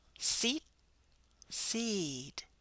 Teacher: how we hold the vowel longer when it's followed by a voiced sound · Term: vowel length